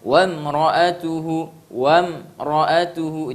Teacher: mim sukun ketemu huruf ro, artinya tidak ketemu ba dan mim, maka tidak boleh dibaca dengan dengung. Harus dibaca jelas. Ya, namanya nanti dalam ilmu tajwid izhar syafawi, jelas di bibir.